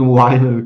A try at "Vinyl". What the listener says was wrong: Nein, es ist ein V. Vinyl.